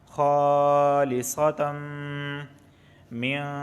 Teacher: تنوین کے بعد میم آیا ہے اور میم حروف یرملون میں سے ہے، تو ادغام اور غنہ دونوں ہوگا